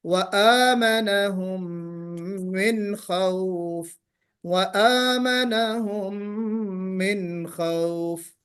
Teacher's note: وآمنہم من خوف میں آپ الف آپ نہیں پڑھ سکیں، وآمنہم، یہ جو الف یعنی الف مدہ ہے، وآمنہم حمزہ کے بعد جو الف ہے یا الف کے اوپر جو کھڑا زبر بنا ہے اس کو کھینچ کے پڑھنا ہے ہم کو